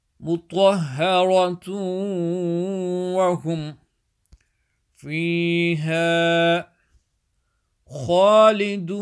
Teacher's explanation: Twa is full mouth. Strongly join with the ha.